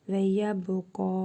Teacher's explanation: Qaf hərfində hərfi məd var. Bir əlif miqdarı uzadırıq.